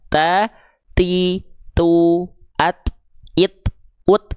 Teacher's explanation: lafalkan t-nya dengan percikan nafas.